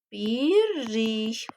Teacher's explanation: l şəkilçisi də yerinə görə d daha sonra r bir də n formasında tələffüz edilə bilər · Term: assimilyasiya